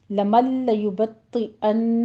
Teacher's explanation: نون ساکن کا ادغام بلا غنہ کریں گے، نون کی آواز بالکل سکپ ہو جائے گی۔ یبطئ طا کو پر پڑھیں گے، تشدید بھی ادا کیجیے، یبطئ ان غنّے واجبہ کریں گے۔